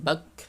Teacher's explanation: ketika sukun suaranya seperti itu, bak, tertahan namun nafas mengalir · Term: kaf